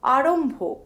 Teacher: The nasal Mo transitions into the aspirated Bho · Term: Moi Bhoi